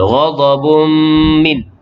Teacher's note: tanwin bertemu dengan mim, idgham ma'al gunnah.